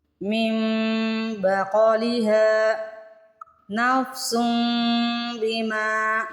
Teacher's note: غنہ بھی کریں گے اور میم کا تلفظ بھی نکالیں گے